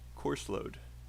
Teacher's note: And I know course load is 2 words, but it sounds like one.